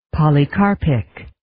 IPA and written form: ,pɑlɪ'kɑrpɪk (Polycarpic)